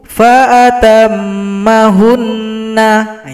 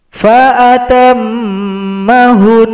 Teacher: Jadi nunnya disukunkan, kemudian karena telah sukun dan nunnya bertasydid, maka ada bunyi dengungan. Jadi cara berhentinya fa'atammahun.